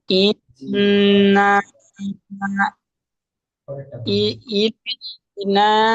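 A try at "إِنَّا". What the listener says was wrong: না টান হবে না, এক টান হবে না, না টান হবে না। জি, ইনটা গুণনা হবে, ওয়াজিব গুণনা।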